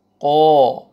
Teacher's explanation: Word میں الف سے پہلے زبر آ رہا ہے تو الف مدہ آ رہا ہے، تو قاف کو ہم کھینچیں گے. قاف زبر الف قا.